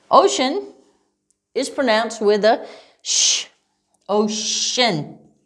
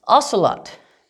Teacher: Ocean is pronounced with a sh, ocean, right? But what about ocelot? Ocelot. This is pronounced with just an S.